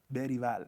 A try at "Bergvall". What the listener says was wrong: It's not with a Spanish accent. He's Swedish.